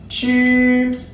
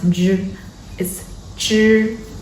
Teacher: The sound 知 does not have expiration, so the air flows smoothly out.